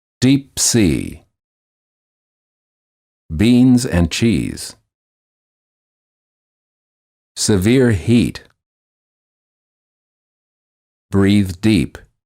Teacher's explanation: The lips are slightly smiling, tense, and not rounded, and the tongue is tense. It is high and far forward near the roof of the mouth. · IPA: /i/